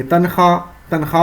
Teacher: واو تو لکھا ہے لیکن گر جا رہا ہے پڑھنے کے وقت، اس کی کاؤنٹنگ نہیں ہو پا رہی ہے پڑھنے میں، اس کی آواز ادا نہیں ہو پا رہی ہے. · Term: واو معدول